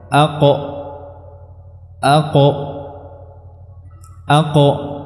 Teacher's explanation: dari pangkal lidah ya bertemu dengan dinding lunak tenggorokan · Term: huruf qaf